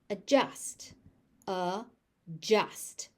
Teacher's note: You notice that D just vanishes.